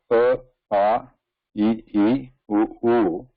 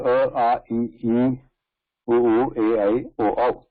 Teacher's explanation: So when we say A, A, E, U, A, I, O, that is Vivrata, because the air is not stopped.